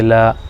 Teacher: الف سے پہلے لام کے اوپر زبر، تو یہ الف مدہ ہو جائے گا، 1 الف کھینچیں گے